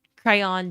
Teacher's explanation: two syllables and the second syllable rhymes with dawn. Crayon.